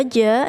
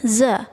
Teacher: Kalau ja itu di tengah-tengah lidah, sedangkan za itu di ujung lidah.